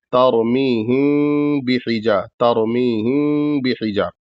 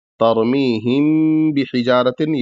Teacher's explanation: पूरे मीम को नहीं अदा करना है बल्कि आधा अदा करना है और आधा नाक में आवाज ले जानी · मीम को पूरा नहीं अदा करना है बल्कि जो है इसको हल्का सा अदा करना है और नाक में आवाज ले जानी है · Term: इफा शफी